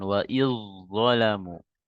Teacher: zalnya seolah-olah menghilang melebur ke huruf zo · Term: idgham mutajanisain